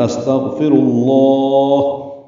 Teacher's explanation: فا کو جلدی پڑھیں گے، را کو پر پڑھیں گے، لام اسم جلالہ کو بھی را کی پیش کی وجہ سے پر پڑھیں گے